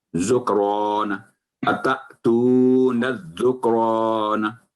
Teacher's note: کلکلہ بھی نہ ہو کاف پہ